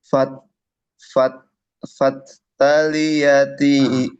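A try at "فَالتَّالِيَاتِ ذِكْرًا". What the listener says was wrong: Kalau kalau dia tasdid, hamzanya nggak ada di sukunya itu, bukan fat, fatta, fatta, gitu ya.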